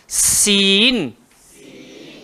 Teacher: Dia kena berdesir, hujung lidah kena langgar belakang gigi bawah